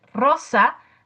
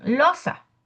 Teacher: muchos niños articulan la L, sustituyen la R por la L. Entonces, por ejemplo, en lugar de decir rosa, dicen losa. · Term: sustitución